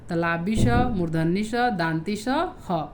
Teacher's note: इनका उच्चारण करते समय हवा के तेज गति से मुंह से रगड़ खाने के कारण उष्मा, गर्मी सी पैदा होती है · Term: ऊष्म व्यंजन